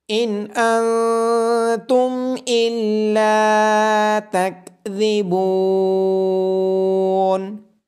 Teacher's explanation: لام کے بعد الف مدہ اور با کے بعد واو مدہ ہونے کی وجہ سے ان کو لمبا کیا جائے گا · نون ساکن کے بعد حروف حلقی میں سے حمزہ ہونے کی وجہ سے اظہار ہوگا